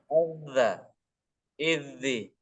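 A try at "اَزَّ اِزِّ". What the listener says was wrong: Nah, terlalu cepat. Azza.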